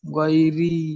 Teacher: ইয়া মাদ্দাকে একালিপ পরিমাণ টান দিয়ে পড়তে হয়। যেমন গাইরি, মাথা টান দেন।